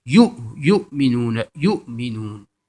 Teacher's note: یہ جو ہے یا واو جو ہے نہیں پڑھی جائے گی بلکہ حمزہ ہے، حمزہ پڑھا جائے گا اور یہ پر پیش ہے اور آگے حمزہ ہے، تو یہ واو پہ یہ جزم کی آواز ہوگی۔